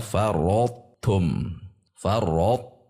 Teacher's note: jadi tebal dahulu rot tum kemudian tumnya tipis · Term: idgham yang tidak sempurna